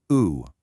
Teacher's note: we transition by making our lips even tighter and more rounded for the oo